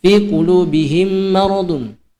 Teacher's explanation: Nah, mim mati bertemu dengan huruf mim. Ya, sama, dia ditahan 2 harokat. Ya, dia ditahan 2 harokat. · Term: idgham mimmi